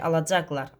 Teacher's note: Alacaqlardan vurğu caqa düşər. Lar vurğu qəbul etməz.